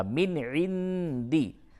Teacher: نون ساکن کے بعد عین ہے تو اس جگہ پہ اظہار ہوگا ، من عندی، اور نون ساکن کے بعد دال ہے، یہاں